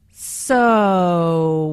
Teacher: Notice how the “o” sound is drawn out here, combined with the intonation, which shows boredom.